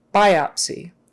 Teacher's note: The stress is on the first syllable. Biopsy. Not biopsy.